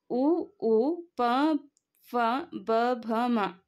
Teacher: ತುಟಿಯ ಸಹಾಯದಿಂದ ಹುಟ್ಟುವಂತಹ ಅಕ್ಷರಗಳನ್ನ ಓಷ್ಟ್ಯ ವರ್ಣಗಳು ಅಂತ ಕರೀತೀವಿ · ಈ ಅಕ್ಷರಗಳೆಲ್ಲವೂ ಕೂಡ ತುಟಿಯ ಸಹಾಯದಿಂದ ನಾವು ಉಚ್ಚಾರ ಮಾಡ್ತೀವಿ. ಹಾಗಾಗಿ ಇದು ಓಷ್ಟ್ಯ ವರ್ಣಗಳು.